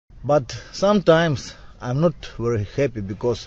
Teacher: he needs to pronounce that V and very as a v it kind of sounds like a w and it also sounds like he's saying worry instead of a very